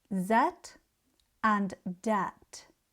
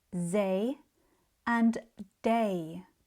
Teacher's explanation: When the voiced th sound is not produced correctly, it sounds more like a d or z. For example, that might sound more like zat and dat.